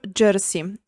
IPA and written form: ˈʤɛrsi (jersey)